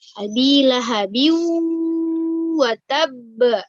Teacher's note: Karena di pada huruf ba itu terdapat kasrotain ya, kasrotain yang setelahnya adalah waw tasydid ya, dan dia itu kedudukannya sebagai gunnah ya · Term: idgham bi gunnah